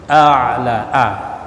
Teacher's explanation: A ini jangan digabung a dengan a, bukan a'la tapi a'la. A'la ya, a kemudian masuk tenggorokan huruf ain